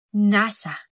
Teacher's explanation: na ang dila ay sa likod ng ngipin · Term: pailong